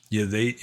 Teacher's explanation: Burmese often pronounce R like Y, because in the original Burmese language, there was no R sound.